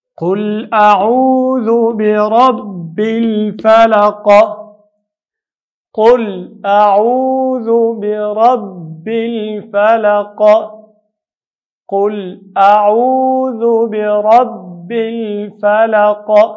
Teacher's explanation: ذال د ژبې په سکو ادا کوو · الفلق لام قمري ده او آخر کې وقف په قلقلې سره کوو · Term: قلقله